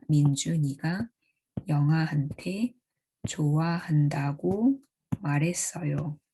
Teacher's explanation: The last AP has a rather flat tone because the sentence final tone overrides the AP final tone at the end of the sentence.